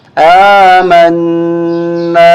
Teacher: الف زبر نا، آمنا، نون پر مشدد ہونے کی وجہ سے، نون مشدد ہونے کی وجہ سے یہاں ہم غنہ کریں گے اور کھینچیں گے الف کی وجہ سے